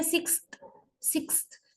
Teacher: Your tongue definitely lies with the upper teeth, not in alveolar ridge. It touches the upper teeth. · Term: dentalization